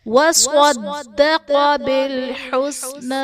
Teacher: وَصَدَّقَ بِالْحُسْنَى، صاد اور دال صدقہ میں حرف مستعلیہ ہیں، پر پڑھے جائیں گے۔ دال حرف قلقلہ مشدد ہے، تو یہاں پر قلقلہ خوب جماؤ کے ساتھ کریں گے۔